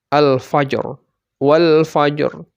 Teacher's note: yang Sukun dan sebelum jin itu ada huruf Fa yang fathah maka RO nya dibaca tebal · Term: ro tafkhim